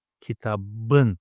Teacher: Kitap, book, but I want to write o the book, so it should be kitapın. But p, the last consonant of the word kitap, is an explosive consonant, so it's going to alternate itself to kitabın.